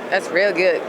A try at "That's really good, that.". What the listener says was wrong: She said that's real good. You stuck to the American accent there.